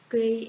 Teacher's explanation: pada silabel pertama terdapat bunyi g, artikulasinya hambat letup bersuara, artikulatornya velar